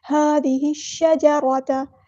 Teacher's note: هذه، ذال کو نرمی سے ادا کرنا ہے، سختی نہیں لے کے آنی ہے، زش نہیں پڑھنا، ذی، هذه، ہا کو ہم نے شین کے ساتھ ملا دینا، ہا سمپل ادا کرنا ہے، حمزۃ الوصل ہمارا ڈراپ ہو جائے گا، لام یہاں پر لام شمسیہ ہے تو اس کو ظاہر نہیں کرنا۔ هذه الشجرة، را یہاں پہ پورا ادا کریں گے، ہیوی لیٹر ہے اور تا باریک ادا ہوگا اور تا کی زبر کو لمبا نہیں کرنا۔